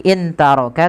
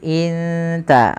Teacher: bacanya bukan lagi in taraka tapi inta langsung samarkan kepada makhraj daripada huruf ta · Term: ikhfa